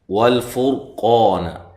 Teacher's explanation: لام کو ہلانا نہیں ہے، فور را کو موٹا ادا کرنا ہے، قا الف مدہ ہے، نون کو لمبا نہیں کرنا.